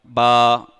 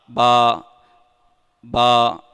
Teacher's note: لیکن پھر اس ہونٹ کے بھی 2 حصے ہیں, ایک ہے خشک حصہ, ایک ہے تر حصہ. با دونوں ہونٹوں کے تر حصے سے ادا ہوتا ہے. یعنی اس طرح پڑھیں گے با.